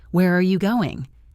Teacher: In English, we have a specific way of asking questions like who, what, where, when, why. Usually, the intonation goes down at the end. Where are you going? Down on going.